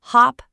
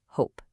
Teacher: The sound completely changes from that short O to a long O. Hop becomes hope.